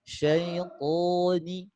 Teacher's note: alif sukun ini juga alif yang jadi tebal karena sebelumnya huruf isti'la, huruf to. Ini alif sukunnya terbuat tebal. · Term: ketebalan